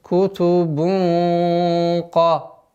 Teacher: Ихфа твердая. Кутубун ка. Так как каф твердый звук.